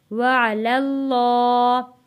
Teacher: اس اللہ کے لام کو ہم نے موٹا پڑھنا ہے کیونکہ اللہ کے لام سے پہلے زبر آ گیا ہے، اس لیے ہم نے اس اللہ کے لام کو موٹا پڑھنا ہے۔